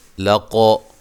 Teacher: قاف کو موٹا ادا کرنا ہے اور قلقلہ کرنا ہے